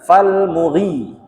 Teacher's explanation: Yang benar falmughi, ri-nya yang panjang. Kenapa? Karena ri-nya itu ada ya sukun setelahnya, diikuti ya sukun, dia mat tabi'iyah.